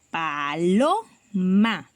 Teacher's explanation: Y podemos identificar que esta palabra tiene 3 sílabas, ¿cierto? Y que la fuerza de su voz está en lo, porque nosotros decimos paloma, ¿cierto? Entonces por ello marcaríamos con un color la sílaba tónica y veríamos que sería grave, ¿cierto?